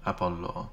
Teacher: With a long O at the end, I can hear.